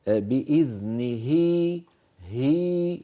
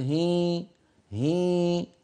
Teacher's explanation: لا تستعمل الأنف مع الهاء، هي هاء صافية